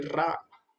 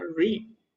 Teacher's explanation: रा में जीवा पूरी टच कर जाती है, रा। लेकिन री में जीवा टच नहीं करती, आधे में लटकती है वो।